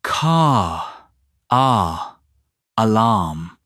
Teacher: And then as soon as you get car alarm, suddenly there's a linking car, alarm.